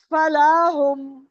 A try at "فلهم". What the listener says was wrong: فلا ہوں نہیں, فلا ہوں فوراً کھینچنا نہیں.